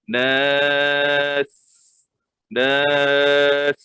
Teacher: bila kita matikan di hujung huruf sin, jadi sin itu kita matikan. Tapi desiran itu berbunyi.